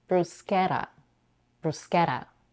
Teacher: it can be flap meaning that it can sound like a very fast letter · because the t comes in between 2 vowels, it can be flapped, meaning that it can sound like a very fast r that many other languages have, or super quick d.